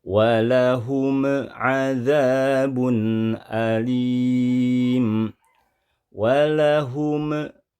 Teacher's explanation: memantul pada bunyi huruf mim, padahal mim tidak termasuk huruf yang memiliki sifat atau karakter qalqalah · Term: suara pantulan